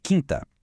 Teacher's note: Diferente de Aquário em quinta, o U é mudo. A gente não fala quinta, né?